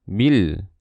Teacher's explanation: Kita lihat huruf setelahnya tidak bertasydid, maka ini jenisnya alif lam qamariyah. Alif lam qamariyah, lamnya harus dibaca jelas.